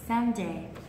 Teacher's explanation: Nhưng lưu ý là không phải là Sunday. Không nhấn vào âm tiết thứ hai, không đọc âm tiết thứ hai to, chỉ được đọc âm tiết đầu tiên to và dài hơn thôi.